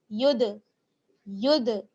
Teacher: ہم دال کی آواز کو بند نہیں کریں گے، لوٹ کر واپس آئے گی. یا دال پیش ید، ید. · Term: حروف قلقلہ